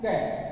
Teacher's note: क का उच्चारण करते समय जो श्वास वायु है फेफड़ों से उठती है, उसको जो अवरोध है वो कंठ में मिलेगा, या श्वास वायु जो है वो कंठ में अवरोधित हो रही है।